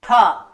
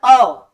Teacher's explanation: अगर हम बोल रहे हैं अ, कितना जोर से आप अ बोले, लेकिन अगर दोनों वर्णों में आप महसूस करेंगे तो ठा बोलने में वायु बहुत ज्यादा हमारी बाहर निकल जाती है, और जो अ बोलने में उतनी प्रेशर से या उतनी ज्यादा मात्रा में वायु नहीं निकलती है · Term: महाप्राण वर्ण